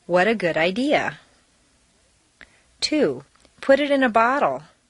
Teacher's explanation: make sure that the underlined unstressed T's sound like a soft D